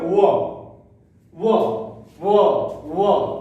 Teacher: होंठ की भी जरूरत पड़त है और दांतों का जरूरत पड़त है। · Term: ओष्ठ एवं दंत